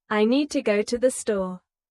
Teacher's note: Make need and store strong. And let to the be quick and light.